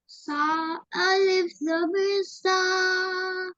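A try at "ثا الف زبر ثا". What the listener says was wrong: Shabash.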